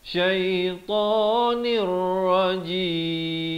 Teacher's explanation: dia masuk tanpa dengung, daripada syaitanin jadi syaitanir, terus masuk ke dalam ra tanpa didengungkan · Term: idgham bila gunnah